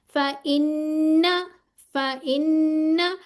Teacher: ये जो नून के ऊपर तशदीद आ गया, इस पे क्या होगा, 2 काउंट्स गुन्ना करना है